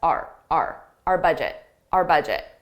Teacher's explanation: I pronounce it just as a very unstressed our budget